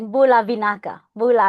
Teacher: when it comes to pronouncing something with b you have to pronounce it with nb